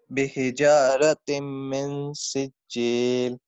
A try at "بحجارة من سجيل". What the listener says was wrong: من پہ غنہ کرنا ہے. بحجارة من سجيل